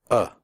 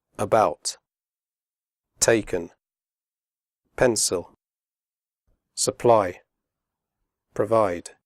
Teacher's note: the sound is made with your mouth slightly open and relaxed and without moving your tongue it comes from the throat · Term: schwa